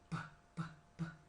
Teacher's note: Kita hambat udara di situ. Contoh bunyi p, kita hambat di ujung bibir kita nih.